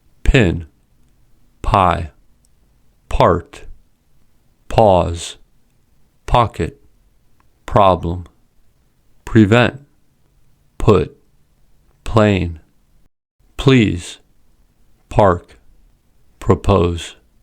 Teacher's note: When P comes at the beginning of a word or at the beginning of a stressed syllable, it is an aspirated P. These words have aspirated P sounds as P comes at the beginning of the word.